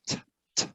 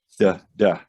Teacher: So if we look at how we make them in our mouth, t, t, duh, duh. Everything is the exact same in placement. It's just that we turn our voice on, or our voice box, vocal folds, whatever you want to call them, to get that sound. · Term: cousin sounds